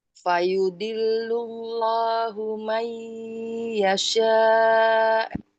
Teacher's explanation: Fayudillullahu itu ada lafadz jalalah dibaca tebal karena sebelumnya domah. La-nya itu matobi'i karena ada mata berdiri, alif berdiri.